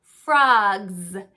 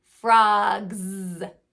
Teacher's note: our voice box on like has our voice box on then the S is going to represent the z sound because it also has our voice box on